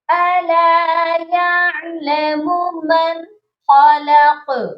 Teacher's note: قاف پر ہم جب رکے ہیں، قاف کو ہم نے ساکن کیا ہے تو قاف پر قلقلہ بھی لازمی کریے گا · یہاں پر آپ دیکھیے گا من، بہت سے لوگ یہاں پر من خلق غنہ کرتے ہیں. یہاں پر غنہ ہرگز مت کریے گا کیونکہ نون ساکن کے بعد حروف حلقی جب آتا ہے تو ہم غنہ نہیں کرتے ہیں. تو یہاں پر آپ نے غنہ نہیں کرنا، یہاں پر بس آپ نے نون کی آواز پر آ کر رکنا ہے اور فوراً آگے چلے جانا ہے، یعنی کہ اظہار کرنا ہے.